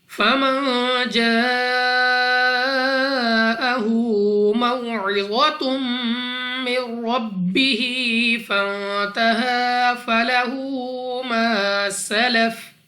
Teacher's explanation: نون ساکن کے بعد جیم حروف اخفا میں سے ہے، غنہ کر کے پڑھیں گے